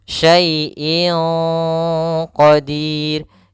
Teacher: di sini ada tanwin bertemu dengan huruf qaf, maka dinamakan dengan hukum tajwid berupa ikhfa. Ikhfa yaitu membaca di antara idgham dan izhar.